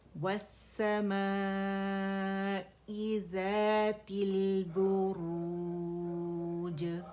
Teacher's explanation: جیم پہ ہم نے آ کے رک جانا ہے, اسے وقف کی صورت میں ہم قلقلہ کریں گے